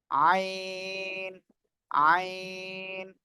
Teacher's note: এই অক্ষরটা কি আইন গলা চেপে হ্যাঁ কি বললাম গলা চেপে গলা চেপে আপনি চার আলিফ টেনে এই অক্ষরটি উচ্চারণ করবেন · এক কথায় আমি যদি বলি গলার মধ্যখান বা গলার মাঝখান বা গলা চেপে গলার মধ্যখানে আপনি চেপে এ অক্ষরটা উচ্চারণ করবেন আইন আইন সবাই একসাথে জোরে জোরে বলেন [মিউজিক] তো মাশাল্লাহ মাশাল্লাহ